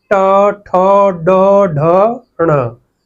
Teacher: यानी कि जिन व्यंजनों का उच्चारण या जिन वर्णों का उच्चारण हमारी जीव्या के मूर्धा के स्पर्श से होता है, जीव्या के मूर्धा के ऊपर स्पर्श करने से होता है, उन्हें मूर्धन्य वर्ण कहते हैं। यानी कि इनमें हमारे जीभ का जो भाग है वो मूर्धा को स्पर्श करता है।